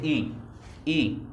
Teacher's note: संवृत होता है क्लोज। मुख द्वार लगभग इसमें पूरा बंद ही रहता है।